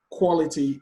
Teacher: Quality, the stress is on the first syllable.